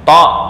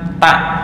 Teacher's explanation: To kolkolah, ta enggak kolkolah. Ta hamas, to bukan hamas. Tuh. Ini hurufnya sama, huruf sama makhraj tapi beda sifat.